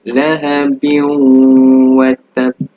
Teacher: Tanwin baris bawah bertemu dengan huruf waw. Dia akan didengungkan sebanyak 2 harakat.